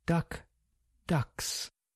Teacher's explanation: K is voiceless and s is voiceless.